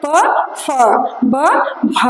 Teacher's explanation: ಎರಡು ತುಟಿಗಳ ಮಧ್ಯೆ ಹುಟ್ಕೊಳ್ತಕ್ಕಂಥ ಅಕ್ಷರಗಳು